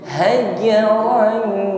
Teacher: Mengucapkan ron, kita siapkan pada makhraj jim, yang mana makhraj jim ini keluar daripada tengah lidah, nempel pada langit-langit atas. Hajaran, sudah berdengung, ya, dengungnya ringan saja, bersiap pada huruf jim.